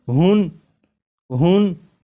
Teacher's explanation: تو جب ہا کو پڑھیں گے تو آخر میں نون ساکن کی آواز آئے گی